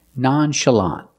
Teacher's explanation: the last syllable is the open ah sound like in hot and stop